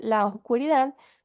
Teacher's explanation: suele pronunciarse la a y la o como una sola sílaba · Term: sinalefa